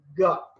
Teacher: Not only that, in the production of ga sound, ga, this back of the tongue touches soft palate